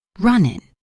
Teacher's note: I personally pronounce it, but it's very soft. The tongue goes up to the position for the G but doesn't fully release it.